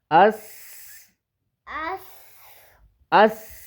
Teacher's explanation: اس یہ دیکھو ایسے جیسے سو رہا ہے یہ. آس اس کو نہیں لمبا کرنا بیٹا، سین کو سختی سے پڑھنا ہے